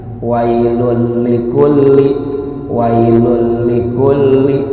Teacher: Contohnya ini, tulisannya wailun bertemu dengan lam, maka bunyi n pada wailun dilebur ke dalam bunyi huruf di depannya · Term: Idgham bila gunnah